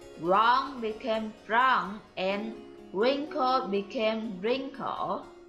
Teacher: the labial approximant was dropped before an alveolar approximant